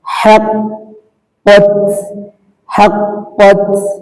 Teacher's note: তার উপরে সাকিন হলে হামস হবে, হালকা বাতাস বের হবে।